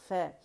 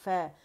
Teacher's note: निचले होंठ का पेट और ऊपर के आपस के दांत आपस में जुड़ेंगे नरमी से, फ, ठीक है, फ, और जुड़ के जुदा हो जाएंगे ज़बर की डायरेक्शन में, ठीक है, क्योंकि हमें हरकत जो है ये हमें क्या, इनकी अपनी कोई आवाज़ नहीं होती, ये हमें डायरेक्शन बताती, सिमत बताती कि आवाज़ किस सिमत जा रही है। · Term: फ की आवाज़